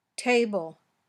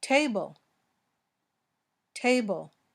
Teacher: it was the puffy t because it's at the beginning of a word.